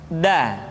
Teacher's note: Da diucapkan dengan menyentuhkan ujung lidah kita dengan bagian gusi-gusi dua ujung ee dua gigi seri bagian atas da. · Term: huruf da